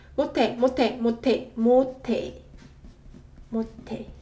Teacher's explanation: 인몸, 인몸, 인몸, 인몸, 인몸. And 시읒 받침 followed by 히읗 consonant produces t sound